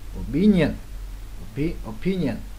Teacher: Opinion, opinion, nhấn lần hai luôn